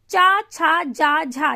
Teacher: जब हम चा, छा, जा, झा बोलते हैं तो हमारी जीभ जो है वो हमारे तालू को स्पर्श करती है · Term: तालव्य